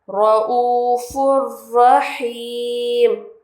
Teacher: तनवीन के बाद अगर रा आए तो वहाँ हम गुन्ना नहीं करेंगे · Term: इदगाम रा